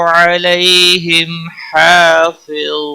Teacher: میم ساکن کے بعد ہا آیا ہے اظہار ہوگا، اظہار شفوی کہتے ہیں اس کو ، ہا کے اوپر کھڑی زبر ہے ایک الف کے برابر